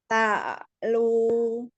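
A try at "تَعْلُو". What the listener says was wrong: Turun lagi, Bu. Kayak ditelan, Bu. Masih jadi PR ya ainnya ya.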